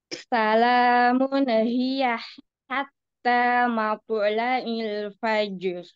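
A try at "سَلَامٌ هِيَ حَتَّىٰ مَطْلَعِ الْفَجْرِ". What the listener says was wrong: Nah, huruf nun itu ada sifat tawasud ya atau bainiyah. Nah, alirkan sedikit lagi biar tidak ada tawaludnya ya, tidak ada pantulan ya. Salamun hiya hatta matla'il fajr.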